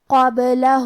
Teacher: قلقلہ کا معنی ہے حرف ساکن کو ہلانا، لہذا ہم با کو ہلاتے ہوئے یہ کلمہ کو پڑھیں گے